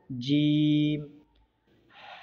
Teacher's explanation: जीम का मखरज ज़ुबान के बीच के हिस्से को ऊपर के तालू पर लगाने से जीम अदा होते हैं